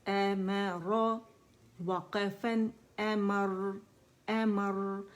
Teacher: اس میں توسط ہے تو را میں اس کی آواز تھوڑی سی درمیانی چلے گی